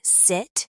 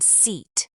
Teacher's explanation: In English, some vowels are short and quick, like in sit, and some are long, like in seat. Your mouth needs to feel the difference. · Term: vowel length